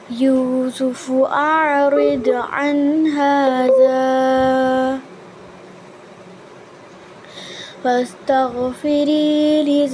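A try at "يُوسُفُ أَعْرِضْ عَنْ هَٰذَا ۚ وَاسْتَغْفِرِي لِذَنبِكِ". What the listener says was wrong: यहाँ सांस तो नहीं लिया आपने, सांस नहीं लेना था, यहाँ सकता है। सकते का मतलब अन हाजा और वस्तगफिरी लिज़म्बी को इकट्ठा पढ़ेंगे, लेकिन हाजा के बाद सांस कंटिन्यू रहेगा, आवाज़ थोड़ी देर के लिए बंद कर देंगे।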